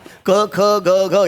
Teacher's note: याला कंठ्य म्हणतात. कंठ का? कारण ते कंठातून येतात